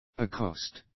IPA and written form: ə'kɒst (accost)